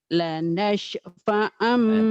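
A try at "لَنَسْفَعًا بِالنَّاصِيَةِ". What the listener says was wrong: Ini biar sin kecil. Lanasfa'am. Ya biasa aja.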